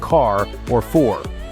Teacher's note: the R sound is pronounced clearly at the end of words like car or for